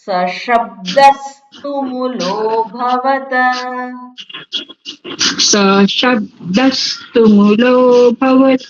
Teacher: શબ્દ દ ઉપર ભાર મૂકવાનો છે